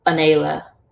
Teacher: You may hear some people use a breathy H there, but most of the time it's just completely silent.